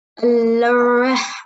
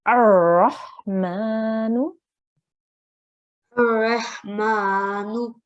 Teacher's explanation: there is nothing on the lam. So you have to join the alif directly to the ra. Okay, so we would say Ar-Rahmanu.